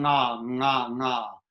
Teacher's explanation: And what we do to find that is you make a little NG sound. That's the middle of your tongue and your soft palate coming together, going nga, nga, nga, something like that.